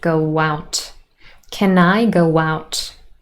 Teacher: There's a w appearing here. It's linking from vowel to vowel sound